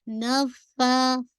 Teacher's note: نفا فا پہ ہمس بھی ہو رہا ہے، 2 کاؤنٹ اسٹریچ کیجیے